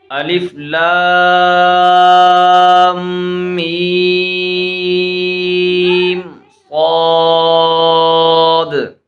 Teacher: اچھا یہاں پر دیکھیں، یہاں بھی مد لازم ہے، یہاں بھی مد لازم ہے، اور یہاں بھی مد لازم ہے۔ صاد کو پر پڑھیں گے کیونکہ صاد حروف مستعاریہ میں سے ہے